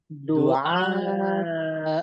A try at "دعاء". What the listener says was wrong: আ আওয়াজ ছড়িয়ে গিয়েছে, খেয়াল করেন।